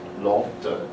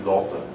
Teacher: the T sound in Lotte would be held quite long. So it would be almost like a geminate T, Lotte, and this would be Lotte.